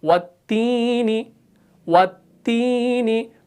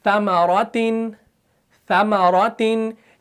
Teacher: तो ता को जब हमने पढ़ा तो जुबान का बीच वाला हिस्सा ऊपर तालु से नहीं मिला।